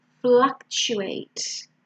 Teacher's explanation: So the first syllable is an A, fla, and then the T sound is a ch